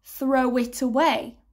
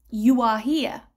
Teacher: We join them together with a wa, to eat, to eat. · So the vowel at the end of the first word needs to be what's called a rounded sound. So your mouth needs to be oo.